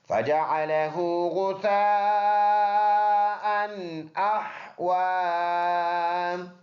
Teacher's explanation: واو پر کڑی زبر ہے، ایک الف کے اندازے سے لمبا کریں گے